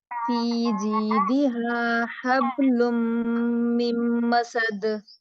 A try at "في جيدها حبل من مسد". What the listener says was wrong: اب دیکھیں آپ نے کہا حبلن آواز مخرج میں رکنی نہیں چاہیے ہاب پلٹنی چاہیے بات یہ فی جیدہا حبل من مسد دوبارہ پڑھیں